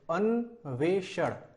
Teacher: यहाँ पे जो श है वो हमें मूर्धन्य श का प्रयोग करना है, ना कि इसके अतिरिक्त कोई और श।